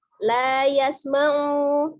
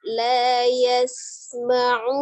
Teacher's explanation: Dia juga memiliki sifat al-hamas, mengalirnya udara ketika mengucapkan huruf sinnya